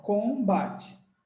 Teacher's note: são consoantes bilabiais, onde o lábio fica coladinho